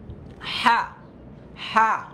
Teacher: গলা থেকে হা, হলকের মাঝখান থেকে